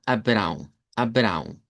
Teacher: con A nasalizada y una W nasalizada